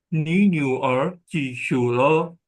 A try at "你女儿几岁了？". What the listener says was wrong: SUI. UI. Tengahnya ada apa? E. Ada E.